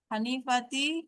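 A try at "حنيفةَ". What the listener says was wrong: Hanifata, bukan Hanifati, Hanifata.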